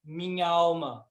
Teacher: se termina com a vogal a e começa com a vogal a Eu também junto